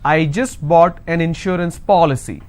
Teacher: need to stress on the third from right, which means I will stress on po